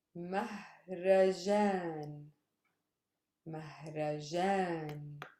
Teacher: I stress the last syllable, jan. It's a super heavy syllable. Mahrajan. And that means festival.